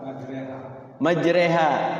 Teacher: majreha Ya itu namanya Ima imalah ya imalah itu artinya ya artinya adalah memiringkan bacaan fathah kepada kasrah jadi fathah tidak kasrah juga tidak miring makanya itu jadi